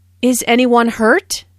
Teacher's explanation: This is a yes/no question, so the intonation rises at the end. Notice how this question is asked in a worried way.